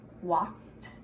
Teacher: The word walked the word walk ends with the sound T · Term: T sound